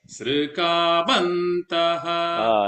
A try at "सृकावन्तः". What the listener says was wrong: Now you said the Sr. Remember it is a R.